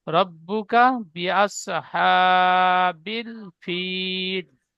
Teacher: বলেন বিআসহা, এই হায় একালিপ টান হবে, খাড়া সাবার, এখানে একালিপ টান দেবেন, তারপরে শেষে টান দেবেন ফিল বলে, বাকি টান হবে না। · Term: ফিল বলে টান